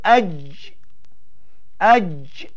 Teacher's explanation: diangkat tengah lidah ke langit keras di atas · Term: huruf jim